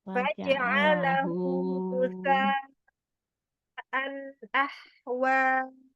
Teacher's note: Nah, ini ada mat wajib nih. Ada mat yang bertemu dengan hamzah di dalam satu kata. Ini juga harus dibaca panjang.